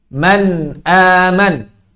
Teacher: Nun sakinah dan tanwin dibaca dengan jelas atau izhar bila berhadapan dengan huruf-huruf halqiyah. Huruf-huruf yang keluar dari tenggorokan. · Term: al-izharul halqi